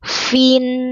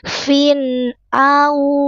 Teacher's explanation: terang jelas tanwinnya tanwin bertemu dengan hamzah izhar halq fin au fathah berjumpa dengan wau sukun harfulin ayunkan dengan lembut au bukan ao au tasri alirkan sinya tidak boleh memantul tas Au tasri rinnya tipis, lidahnya datar senyum.